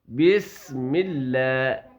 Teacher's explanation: سین کی سیٹی کی طرح آواز آئے گی